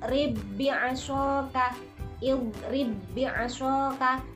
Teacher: Dia tidak memantul, akan tetapi langsung masuk kepada huruf ba yang setelahnya. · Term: idgham mutamasilain